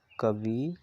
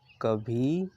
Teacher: छोटी ई के उच्चारण में कम समय लगता है और बड़ी ई के उच्चारण में छोटी ई से दोगुना समय लगता है।